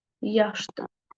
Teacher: Vurğu da düşür ilk hecanın üzərinə.